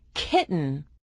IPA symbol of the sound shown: k